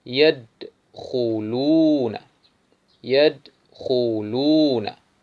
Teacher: melafalkan huruf kha pada pangkal tenggorokan